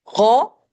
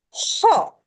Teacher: غین غرغرے والا خا اور خا خراٹے والا خا، دونوں کا پلیس آف ساؤنڈ ایک ہے، دونوں ایک ہی جگہ سے ادا ہو رہے ہیں لیکن ڈیفرنٹ ساؤنڈز کے ساتھ نکل رہے ہیں۔ ایک میں ہم نے غرغرے والا غا پیدا کرنا ہے اور دوسرے میں ہم نے خراٹے والا خا پیدا کرنا ہے۔